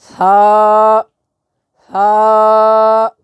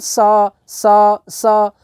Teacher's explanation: سین کے اندر سیٹی کی آواز آئے گی